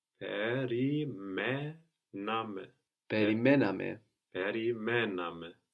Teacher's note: We're going to have the accent third from the end.